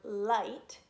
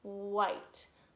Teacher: you see that my lips are rounded and puckered out kind of like a fishy lip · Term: sneaky W